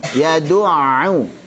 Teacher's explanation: Dan du serta ainnya tipis.